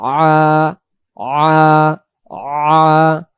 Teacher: এখন আমরা যদি পরে আলামিন, আর শব্দের শুরুতে দেখেন এটা হলো আলিফ অক্ষর, আলিফের উপরে জবর দিলে আলিফ জবর আ হয়, বা হামজা জবর আ। এখন এখানে হলো আইন জবর আ, গলা চাপ লাগবে · আইন অক্ষরের উচ্চারণের স্থান হলো গলা চেপে একটু পড়তে হবে